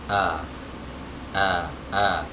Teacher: Keluarnya dari tenggorokan bagian bawah. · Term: hamzah wasol